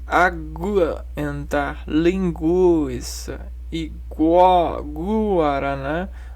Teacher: nas palavras aguentar, linguiça e guaraná, o U é pronunciado